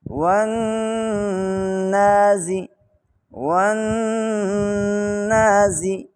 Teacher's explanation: یہ جو زا ہے اس کو جب ہم نے پروننس کرنا ہے اس میں ایک سیٹی کی آواز بھی پائی جاتی ہے۔ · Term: حروف صفیریہ